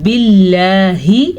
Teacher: باللہ لفظ اللہ سے پیچھے زیر ہے تو لفظ اللہ باریک پڑھیں گے